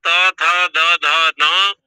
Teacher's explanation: ये सब दांत के द्वारा दंत से उच्चारण होते हैं